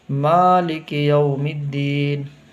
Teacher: میم کو کھینچنا ہے، دال کو بھی کھینچنا ہے